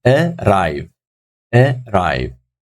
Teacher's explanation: Second syllable, obviously, we're saying it stronger than the first one. So the second syllable is taking the stress.